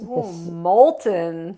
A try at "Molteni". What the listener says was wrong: No, Molteni. Molteni. Because you didn't see the eye.